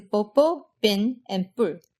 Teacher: your throat's going to tense up a bit as you say it, and you're going to pop your lips open faster. As a result, there's going to be more energy in the consonant, and so once your lips pop open, the vowel will be higher pitched. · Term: tense consonant